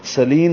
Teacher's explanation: نل لام ساکن پہ اظہار ہے، مرسلین میں را پر ہے، موٹا پڑھیں گے، میم کو ہونٹوں کو بند کرنے سے نکالیں گے. سلین سین سیٹی جیسی آواز سے.